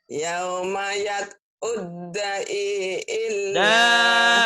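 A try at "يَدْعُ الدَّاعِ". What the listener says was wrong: Da'i. Panjang.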